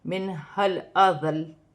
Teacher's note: نون ساکن میں غنہ نہیں ہوگا کیونکہ آگے حروف حلقی میں سے ہا آ رہی ہے، اور یہ الف، یہ دونوں الف پڑھے نہیں جائیں گے۔